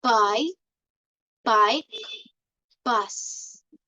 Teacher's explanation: is made with the two lips touch completely and then they release the sound suddenly